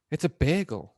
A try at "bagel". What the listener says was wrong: Yeah, you're just putting way too much emphasis on bay. bagel. Bagel.